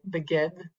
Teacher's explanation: The Dalet is a little bit more of an open sound.